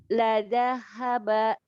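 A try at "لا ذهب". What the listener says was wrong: Ya, barusan Ibu huruf ha-nya ini ya masih ngangkat, masih naik sedikit ya. Masih agak tebal ya. La dhahaba. Harusnya la dhahaba.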